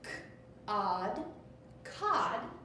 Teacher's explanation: my O is making that ah sound because it is closed in